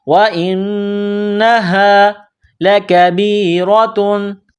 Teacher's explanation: نون میں غنہ کرنا ہے، آواز ناک میں چھپانی ہے. یہ گول ہا ہے چشمے والی، صرف منہ سے ہوا نکالنے کی طرح اس کو پڑھا جاتا ہے